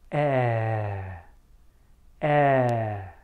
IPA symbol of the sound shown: ɛ